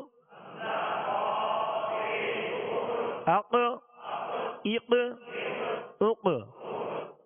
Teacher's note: یہ حروف قلقلہ میں سے ہے، اس کو پر بھی پڑھنا ہے اور اس میں قلقلہ بھی کرنا ہے